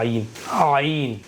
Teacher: आइन का मखरज है बीच हलक से अदा होता है